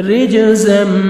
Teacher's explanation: جیم حروف قلقلہ میں سے ہے ڈبل ساؤنڈ آئے گا جب بھی ساکن آتے ہیں